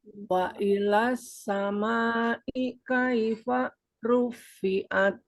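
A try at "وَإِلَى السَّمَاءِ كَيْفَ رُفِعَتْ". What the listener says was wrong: Maknya boleh lebih panjang lagi, Bu. Ini ada bendera di sana di atas. Wa ilas samaa'i kaifa rufi'at. Nah, nanti ru-nya ini bisa ditebalkan lagi ya, Bu ya.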